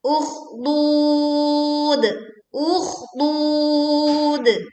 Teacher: Alirkan kha sukun dengan suara yang tebal, kemudian kita memanjangkan dud bisa 2, 4 sampai 6 harokat.